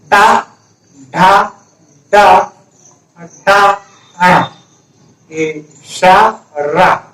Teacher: आपकी जो जीभ का आगे वाला भाग होगा ना वो ऊपर टच हो रहा होगा, इसलिए उसे मूर्धन्य ध्वनि बोलते हैं। इसकी जो ध्वनि है वो मूर्धन्य ध्वनि है।